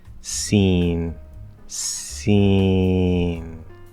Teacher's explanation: the partial nasality doesn't stand out very much but notice that i'm not fully nasalizing it